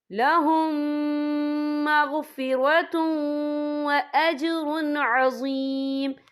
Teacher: تو ہم یہ اظہار کریں گے، ہم اسے بنا غنہ کے پڑھیں گے